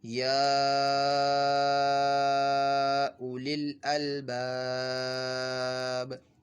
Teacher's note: اور جب ہم وقف کر لیں گے تو یہ آخری حرف ساکن ہو جائے گا. تو یہاں پہ حروف مدہ کے بعد یہ حرف جو ہے وقف کی وجہ سے ساکن ہو رہا ہے تو مد عارض کا قاعدہ ہوگا. تو 2 حرکات 6 حرکات 4 حرکات اتنے کھینچ کر پڑھ سکتے ہیں.